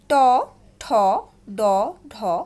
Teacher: উচ্চারণ স্থান হচ্ছে মূর্ধা আর উচ্চারণ স্থান অনুসারে নাম হচ্ছে মূর্ধন্য